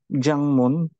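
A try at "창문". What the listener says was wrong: Chang. CH. CH po yan.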